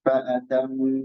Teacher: kemudian kadar panjang gunna ini dua harakat